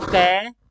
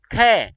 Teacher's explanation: ख में वायु की मात्रा ज्यादा निकली है और कैम में वायु की मात्रा कम निकली है एक बार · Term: महाप्राण